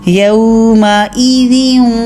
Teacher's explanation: ناک میں بھی آواز لے کر جائیے اور واو کے لیے ہونٹوں کو پورا گول بھی کیجیے · تنوین کے بعد آگے واو آ گیا ہے، تو ادغام بھی کر رہے ہیں، واو کے اندر مرج بھی کر رہے ہیں اور غنہ بھی کر رہے ہیں پورا ، یوم ایذن، ناک میں بھی آواز لے کر جائیے اور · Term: ادغام با غنہ